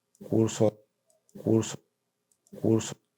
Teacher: No hay una oclusión para la realización de la rótica, sino que hay una continuidad y se observa también una elevación del segundo formante, lo que nos da indicios de la realización de una de una lateral carga curso.